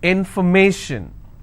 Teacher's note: So where do I stress? I will stress on may.